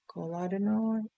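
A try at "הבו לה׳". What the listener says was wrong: It's that's not Cole. It's Havu Ladonai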